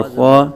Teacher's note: خوا کو پر پڑھیں گے، حروف مستعلیہ میں سے ہے